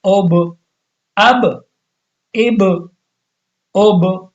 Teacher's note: قلقلہ کے اندر آواز کو ہلایا جاتا ہے، جیسے اب با کی آواز تھوڑی سی ہلے گی، اس میں تھوڑا سی ویبریشن آ جائے گی۔